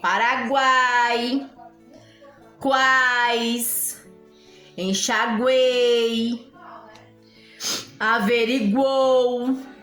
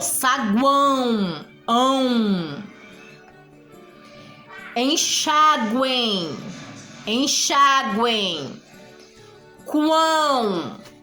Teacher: Oral, sai só pela boca. Você não sente nenhum tremorzinho na pontinha do nariz